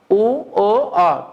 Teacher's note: উ ও অ উচ্চারণ করার সময় দুই ঠোঁট গোল হয়ে যায়, গোলাকৃত, এটাকে বর্তুল স্বরধ্বনি বলে, রাউন্ড হয়ে যায়।